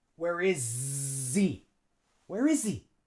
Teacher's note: But he, we drop the H, and now we have a vowel. S and a vowel, we put a Z.